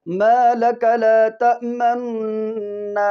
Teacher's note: تو پہلا جو تأمنونا کا جو ضمہ ہے نا اس کو ہم پہلے خفیف سا ہونٹوں کو جلدی کے ساتھ گول کریں گے. تأمنا کا جو دوسرا نون ہے اس میں غنہ کرنے سے پہلے جس وقت غنہ اس میں شروع کریں گے تو اس کے اندر ہونٹ کی گلائی نہیں ہونی چاہیے. پھر تیزی کے ساتھ ما لک لا تأمنا، اس طریقے کے ساتھ.